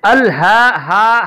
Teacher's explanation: ہا جو ہے یہ سینے سے اس کی ادا ہوگی